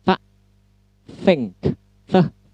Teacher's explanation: Jadi ujung lidah bertemu dengan gigi atas bagian depan.